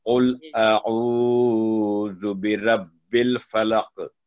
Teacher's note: इसमें बेटा मैं साथ साथ बता दूं आपको दोनों जगह जो लाम पर जज़म है ना आपने वो ठहर गए उस पर लंबी की आवाज को। लाम जज़म कहीं भी कुरान करीम में कहीं भी उस पर स्टे नहीं करना आवाज लंबी नहीं करनी सिर्फ एक सेकंड का उसको टच देना है